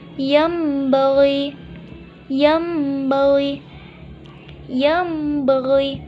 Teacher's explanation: nun mati atau tanwin berubah menjadi bunyi mim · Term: iklab